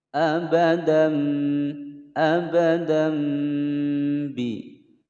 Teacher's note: Cara membacanya yaitu suara tanwinnya fathatain ini diganti menjadi suara mim. Abadam, abadam bi. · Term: iqlab